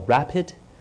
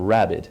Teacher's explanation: those are very similar words they're kind of hard to tell apart in some respect it's what's called a voicing distinction